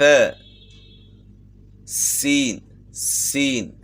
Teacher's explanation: سین جو ہے ثنایا علیا اور ثنایا سفلا جو ہے، ثنایا سفلا اور کچھ معمولی اتصال جو ہے نا ثنایا علیا کا بھی اس میں ہے۔ زبان کا سرہ جو ہے اس کے ساتھ بالکل لگے گا تو نہیں، یعنی اس کے مقابل سرہ جو ہے نا آ جاتا ہے اور سیٹی کی مثل آواز پیدا ہوتی ہے